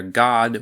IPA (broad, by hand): gɑd